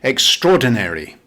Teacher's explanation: The British pronunciation is extraordinary. Now, the American pronunciation is a little different. They make the last syllable longer.